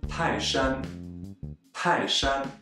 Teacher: In Taishan, the first character, Tai, is a fourth tone, and Shan, which we'll use many times today, is a first tone. Together, they are read as Taishan, Taishan.